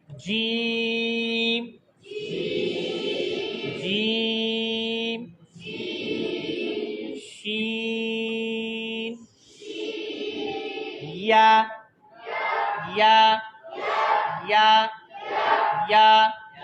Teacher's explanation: छठी मखरज जबान का दरमियाना हिस्सा और तालू से, और तालू, वहां से 3 हरफ अदा होते हैं।